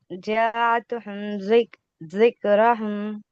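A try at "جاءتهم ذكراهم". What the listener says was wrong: ذکراہم، را کے بعد الف ہے. الف کو کھینچنا ہے، یعنی کہ مد کرنا ہے وہاں پہ. ذکراہم.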